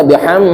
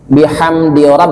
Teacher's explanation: Bihamdi mim matinya tidak boleh dengung, idhar sapawi, nggak boleh dibaca biham, nggak boleh, langsungin.